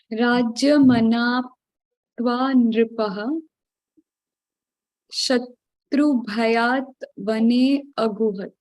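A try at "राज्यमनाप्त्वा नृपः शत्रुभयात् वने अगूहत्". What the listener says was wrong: Yes.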